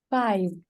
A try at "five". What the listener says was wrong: Because it sounds like you say fi, F-I. Okay, so it's also important to pronounce the v, five.